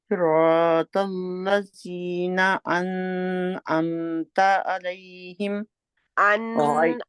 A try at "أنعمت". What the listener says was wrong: अन के ऊपर टाइम नहीं लगाना, क्यों? क्योंकि आगे आगे क्या लेटर है? लीन है ना, हल्किया लेटर है, ठीक है।